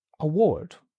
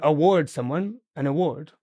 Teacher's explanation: the stress does not change. It's always on that second syllable.